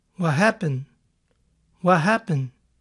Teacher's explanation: What, seguido de happen, puede que pierda su sonido T. What happened, puede oírse.